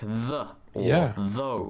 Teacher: the voiced Dental fricative which you find in English words like the or though